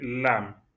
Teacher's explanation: au départ il y a la langue qui est placée sur le palais et ça revient vers le bas.